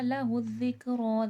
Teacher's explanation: لہ الذکر، دال نرمی کے ساتھ پڑھا جائے گا، رو موٹا کر کے اور تھوڑا کھینچ کے پڑھا جائے گا کیونکہ کھڑا زبر ہے